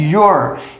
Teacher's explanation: se eu quiser acelerar, a pronúncia acaba ficando your, como se fosse e com acento circunflexo e R